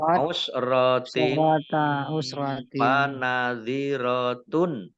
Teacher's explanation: Kasroh tanwin bertemu dengan huruf fa, bacaan ikhfa dibaca samar-samar.